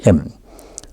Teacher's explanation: And the M sound, nasal sound, comes when both lips are closed and the air goes through the mouth.